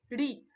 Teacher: আমাদের যে জিহ্বার অগ্রভাগ সেটা কিন্তু গুটিয়ে যাচ্ছে, অর্থাৎ ফোল্ড হয়ে যাচ্ছে, সেজন্য এটাকে আমরা বলছি মূর্ধন্য ধ্বনি, মূর্ধার সাহায্যে উচ্চারিত হচ্ছে বলে।